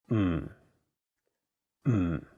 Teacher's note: when someone is thinking about a plan and they say hm notice that there is no vowel in the syllable so you have to really stress the M sound · the first character is in a very low tone fourth tone it sounds a bit like when someone is thinking about a